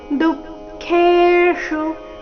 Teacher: ಚರಣದ ಕೊನೆಗೆ ಬಂದಿರುವ ಶು ರಸ್ವ ಬರಬೇಕು